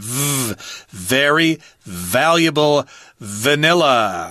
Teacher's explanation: a voiced F sound